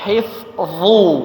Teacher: Hif tipis, kemudian dha tebal.